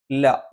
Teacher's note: നാവിന്റെ അറ്റം മേലെ മുൻപല്ലിന്റെ മോണയിലാണ്